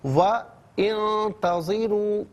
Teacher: وَانتَظِرُوا ملا کر پڑھنے کی صورت میں واو پر زبر ہے، سے انتظروا کے نون ساکن کے ساتھ ملائیں گے اور درمیان میں سے الف یعنی حمزہ کو حذف کیا جائے گا